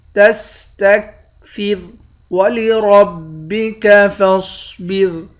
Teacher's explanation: را کو موٹا پڑھیں گے، صاد کو بھی موٹا پڑھیں گے، آخر میں را ہے، اس را کو باریک پڑھیں گے۔